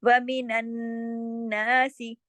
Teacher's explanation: लेकिन ना को खींचेंगे, सीन को नहीं खींचेंगे, सिर्फ सीन ज़ेर सी, सिर्फ एक हरकत · यहाँ सख्ती से जोड़ के दोनों नून पढ़े जाएँगे, सबका हक अलग-अलग अदा होगा